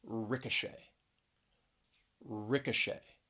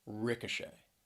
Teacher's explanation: three syllables stress is on that third syllable